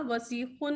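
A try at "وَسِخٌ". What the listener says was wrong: वाह सिकुन। आप इसको वस कह देती हैं, वाह सिकुन।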